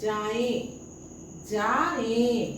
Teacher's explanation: पहले मुंह से फिर उसके पीछे नाक से भी ध्वनि निकलेगा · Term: अनुनासिक